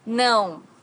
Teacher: não has a very unique sound in Portuguese because it's a nasal sound.